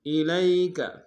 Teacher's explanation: بما انزل الیک، الیک، الی میں لام کو یا کے سامنے لیں گے، یا لین بغیر کھینچے پڑیں گے